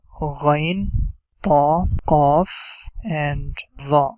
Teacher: All the time we are going to pronounce them with heavy sound, like with full mouth.